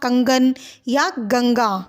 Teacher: अनुस्वार जिसके उच्चारण में वायु केवल नाक से निकलती है उसे हम कहते हैं अनुस्वार